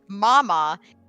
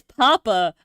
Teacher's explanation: M and P are both made with your two lips they're what's known as B bilabial sounds what's different about them